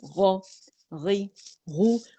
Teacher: زبان کی جو جڑ ہے وہ اوپر نرم تالو سے لگتی ہے تو آواز اوپر جائے گی. ٹھیک ہے, حنک العالی کی طرف تالو کی طرف.